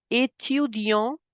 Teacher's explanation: Étudiant, the last T in the end is for decoration